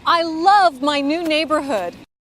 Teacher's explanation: she says the word love louder and slower